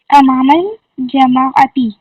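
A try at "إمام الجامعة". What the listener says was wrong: جیم الف ج نہیں ہوتا، جا ہوتا ہے. امام الجامعۃ.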